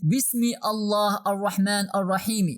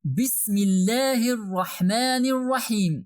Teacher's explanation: Even the kasra in the last letter of the verse should turn to a sukun